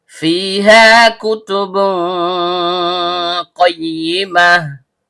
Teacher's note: Fa, huruf bibir yaitu perut bibir bawah bertemu dengan ujung gigi seri atas. · Karena fa-nya berharakat kasrah diikuti ya sukun yang keluar dari tengah lidah naik memantul ke langit-langit